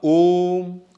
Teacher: यहां पर उच्चारण ए में 2 गुना समय लगता है, लेकिन हे यहां पर ए में उससे भी अधिक समय लग रहा है। ओ, ओम, ओ का उच्चारण क्या किया हमने? 3 गुना अधिक किया, तो इसको हम क्या कहते हैं? प्लुत स्वर।